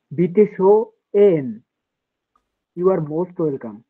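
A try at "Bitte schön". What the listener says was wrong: বিটে শো এন না, মানে আলাদা না, একসাথে উচ্চারণ করবেন। বিটে শো এন, বিটে শো এন।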